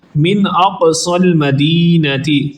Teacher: قاف پر قلقلہ کریں گے۔